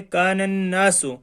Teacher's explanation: نون سے پہلے الف لام آ گئے تو ہم اس کو نہیں پڑھیں گے بلکہ اس نون کو اس نون کے ساتھ ملا کر پڑھیں گے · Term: حروف شمسی